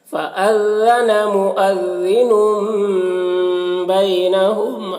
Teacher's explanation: تنوین کو میم سے بدل کر غنہ اور اخفا کے ساتھ میں پڑھیں گے، اس کو اقلاب کہتے ہیں۔